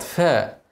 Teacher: ارقق الفاء قبل الصاد فا واضم الصاد والراء طبعا مفخمه عشان قبلها ضمه وهي ساكنه واضم الهاء مرققه